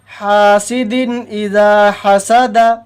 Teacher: یہاں بھی تنوین کو بلا غنہ جلدی سے ادا کریں گے، تنوین کو ظاہر کر کے بلا غنہ جلدی سے ادا کریں گے